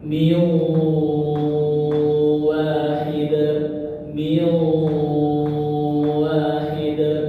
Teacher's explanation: Nah ini nun sukun ke huruf waw. Jadi melebur ke waw, masuk ke waw, ditahan 3 tekan. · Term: idgham